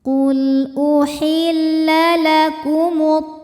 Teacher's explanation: Qul uhilla lakumut, alif lam dinamakan dengan alif lam syamsiyah karena alif lam menghadapi huruf syamsiyah yaitu huruf to, maka alif lam tidak kita baca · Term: idgham syamsi